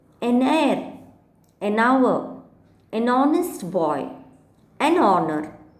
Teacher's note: in all these cases the words begin with H, but then the sound is that of vowel. Therefore you use an here. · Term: silent H